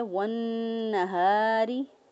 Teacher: ہم اس کو پڑھیں گے والنہاری، ہا زبر الف ہا، ہا جو ہے اس کو اقصی حلق سے ادا کریں گے، یعنی جو سینے کی طرف گلے کا حصہ ہوتا ہے وہاں سے ہا ادا ہوگا، اور الف مدہ ہے، الف مدہ جو ہے یہاں پر اس کو ایک الف کے برابر لمبا کر کے پڑھیں گے۔ را کے نیچے زیر ہے، را کے نیچے زیر ہو تو را کو باریک پڑھتے ہیں، را کے اوپر زبر ہو یا را کے اوپر پیش ہو تو را کو پر پڑھتے ہیں۔